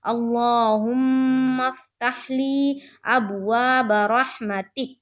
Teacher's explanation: میم مشدد کا غنہ ہوگا